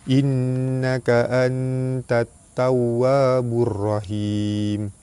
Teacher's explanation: Nun mati bertemu dengan ta, hukum dia ikhfa hakiki, dibaca sama-sama nipis serta dengung 2 harakat.